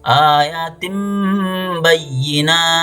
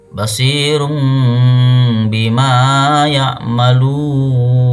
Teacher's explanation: Mim nunnya hilang tapi jadi mim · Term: iqlab